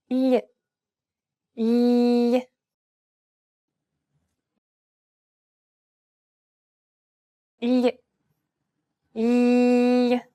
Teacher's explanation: The key point is to make the tongue flat, much flatter than the regular L, and instead of using the tip of the tongue as you normally would, try to use the middle part of your tongue to contact the roof of the mouth. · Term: Spanish L